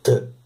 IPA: tʰ